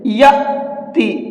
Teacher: اب یہاں دیکھیے الف ہے اور اس کے اوپر جزم آ گیا، تو اب یہ الف نہیں رہا بلکہ حمزہ بن گیا۔ حمزہ کے اوپر جب جزم ہوتا ہے تو پھر اس حمزہ کو جھٹکے کے ساتھ میں پڑھتے ہیں، یأتی، ٹھیک ہے۔